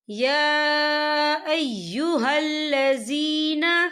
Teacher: یا آپ کے اوپر کھڑی حرکات ہے اور اس پہ چھوٹی سی مد بھی ہے، تو ہم اسے 4 حرکت کے برابر کھینچ کے پڑھیں گے